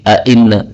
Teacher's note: qalu inna, ini boleh ditambahi hamzah menjadi a'inna